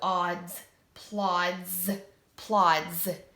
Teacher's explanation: What sound are you hearing with that S? Is that a S sound or is that a Z sound? Good, it is a Z sound.